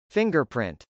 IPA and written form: fˈɪŋgɚpr.ɪnt (fingerprint)